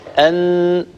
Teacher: النون حرف مجهور، يعني يتضام الوتران الصوتيان عند النطق به، وبالتالي يهتزان ولا يجري نفس كثير عند النطق به، أو ينحبس نفس كثير عند النطق به. · حينما نقول أن ونضع يدنا هنا على الحنجرة أن سنلاحظ أنه ثمة اهتزاز وارتعاد في الوترين الصوتيين. أيضا لو وضعنا يدنا هنا أمام فمنا ونطقنا نونا سنلاحظ أنه هناك انحباس كثير لهواء النفس.